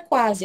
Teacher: O U é a nossa semivogal e logo em seguida ele está acompanhado da letra A. O A é mais forte. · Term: ditongo crescente